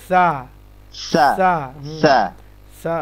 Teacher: সা জিহ্বার ডগা সামনের দাঁতের আগা